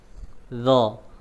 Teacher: Ujung lidah nempel di ujung gigi seri atas. Dha. Kemudian berikan sifat tebalnya, ya. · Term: huruf dha